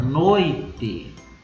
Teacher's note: O O tem o som mais forte, portanto, é uma vogal. E eu vou ter o I, que é o som mais fraco, portanto, é uma semivogal. Quando eu tenho uma vogal primeiro mais uma semivogal, o ditongo é decrescente. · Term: ditongo decrescente